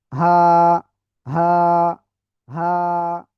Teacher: গলার শুরু থেকে এই অক্ষরটা উচ্চারণ হবে